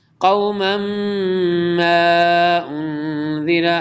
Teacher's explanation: تنوین کے بعد میم آ رہا ہے تو کیا ہوگا؟ ادغام یرملون ہوگا